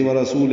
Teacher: مد صلہ، 2 حرکات لمبا کریں گے ملانے کی صورت میں